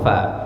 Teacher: Makhraj huruf fa gigi atas bertemu dengan bibir bawah